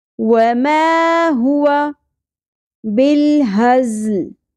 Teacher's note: ज़ में शिद्दत होगी सीटी के साथ